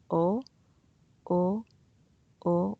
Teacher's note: this korean vowel doesn't have the english sound quality of o you don't finish with the u it's just one sound